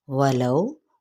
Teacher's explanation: واو ہونٹوں کی ناتمام گلائی کے ساتھ